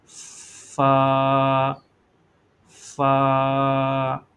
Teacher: فا یہ اوپر والے دانتوں کی نوک کو نچلے والے ہونٹ کے تر حصے پر لگانا ہے، اور لگانے کے بعد اس حرف کو ادا کرنا ہے، فا۔